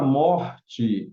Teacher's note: a palavra morte é paroxítona, porque é a segunda sílaba de trás para frente que é a mais forte